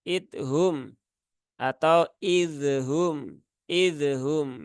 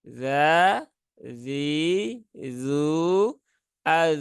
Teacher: tidak ada Qalqalah dia sifatnya rakhaah maka alirkan saja